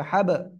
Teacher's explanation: কলকলা করে পড়তে হবে, কলকলার অক্ষর সাকিন অবস্থায় আসছে এর জন্য